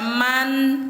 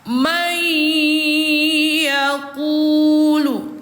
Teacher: Jadi bacanya mai bukan dibaca man tetapi sudah dilebur ke huruf ya sambil didengungkan dua harakat. May yaquulu gitu. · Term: idgham biguna